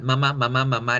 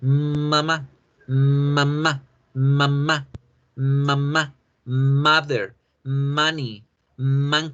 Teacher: la vibración de la m debe sonar un poquito más alargada